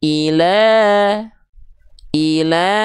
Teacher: Nah, kalau teman-teman mendapati ada fathah baris atas tapi tegak begini ya, maka lanya-nya dibaca dengan kadar panjang vokal a tapi dua harakat. Vokal a-nya dua harakat. · Fathah tegak maka dia dibaca dengan kadar panjang lebih panjang sedikit dua harakat. Nama hukum tajwidnya mad thai. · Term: mad thbi'i